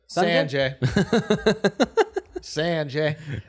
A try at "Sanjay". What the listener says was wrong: You put a D in there.